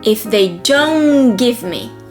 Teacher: whenever you have two consonants, in this case the T from don't and G from give, the first consonant is dropped